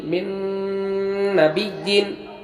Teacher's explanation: نون ساکن کے بعد یا و میم نون میں سے نون آیا جہاں ہم غنہ کے ساتھ پڑھیں گے